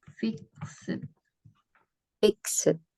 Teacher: kata Ed itu dibunyikan t ya jika pengucapan kata kerjanya diakhiri bunyi voiceless ya jadi enggak ada getaran di tenggorokan